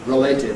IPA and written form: rəˈleɪtɪd (related)